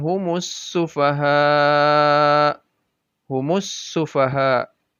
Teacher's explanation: Dan alif lamnya tidak dibaca humul sufaha, tapi langsung sinnya.